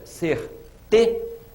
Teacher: você demora mais a voz aqui nessa a sílaba que é a penúltima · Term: paroxítona